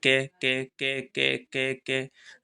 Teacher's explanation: कहां से कंठ से आ रही है